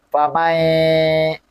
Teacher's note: Famai di situ kan ada dengung ya. Fame. Ada dengung di situ dihunah ya.